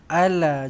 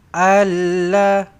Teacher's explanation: Jangan baca alla. Jangan pula disabdukan pula. Tak payah ala aje. Ala la panjang dua harakat.